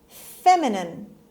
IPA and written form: ˈfemɪnɪn (feminine)